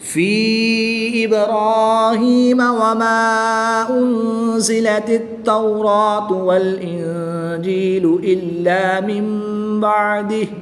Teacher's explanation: الف مدہ کے بعد حمزہ دوسرے کلمے میں ہے تو یہاں پر مد منفصل ہوگی، 2 سے 3 الف تک کھینچ کر پڑھیں گے۔ نون ساکن کے بعد حرف با ہے تو یہاں پر اقلاب ہوگا، یعنی نون ساکن کو میم سے بدل کر غنہ زمانی کر کے پڑھیں گے۔